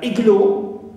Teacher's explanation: the word igloo, though it ends with o, but we stress the first syllable, not the suffix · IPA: / 'ɪglu: /